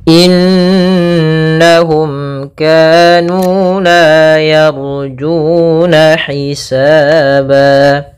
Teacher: lafal mim bertemu dengan Kaf ini kita namakan dengan izhar syafawi yaitu suara mimnya harus dengan jelas tidak boleh ditahan